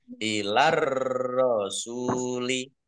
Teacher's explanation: Langsung masuk ke huruf berikutnya yaitu ro, ditandai ro-nya ada tasdidnya. Ro-nya dibaca double. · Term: alif lam tamsiyah